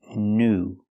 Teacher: It's pronounced oo. The long oo sound like food and moon.